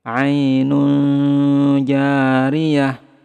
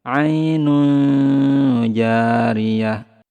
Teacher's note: samarkan tanwinnya, kemudian tahan 2-3 harokat, kemudian lidah kita bersiap ke huruf ja.